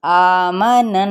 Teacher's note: ये बाकायदा नाक में वाइब्रेशन होगी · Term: गुन्ना